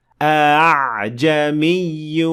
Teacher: اس حمزہ کو تھوڑا ہلکا یا نرم پڑھا جانا چاہیے